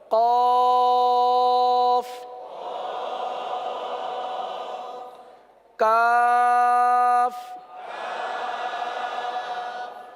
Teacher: जबान की जड़ और तालू का नरम हिस्सा। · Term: कौफ का मखरज